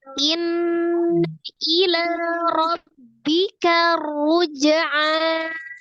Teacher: Maka dibaca tebal. Jadi ro sukun sebelumnya fathah juga dibaca tebal, ya. Jadi tebal, pas karnya tebal, ru-nya juga tebal.